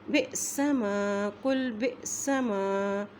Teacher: حمزہ کے اوپر جب جزم آ جاتی ہے تو اس کو ہم وہاں پہ ہم جھٹکا دے کے پڑھتے ہیں